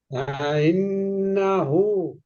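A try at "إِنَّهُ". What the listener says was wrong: হু টান হয়নি।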